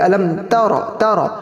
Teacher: علم ترا رو پور ہے تا باریک ہے